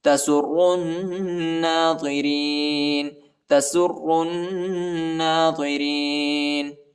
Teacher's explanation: فاقع لونها، فاقع لونها تسر الناظرین، سین کو را کے ساتھ ملائیں گے اور را کو نون کے ساتھ ملائیں گے، الف اور لام نہیں پڑھا جاتا اور نون پر غنہ بھی کریں گے، ضا کو موٹا پڑھیں گے۔